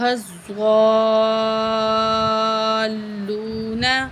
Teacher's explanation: یہاں مد ہے تو ایک الف کے برابر بڑی مد ہے، چار الف کے برابر کھینچیں گے، زواد کو موٹا کر کے پڑھیں گے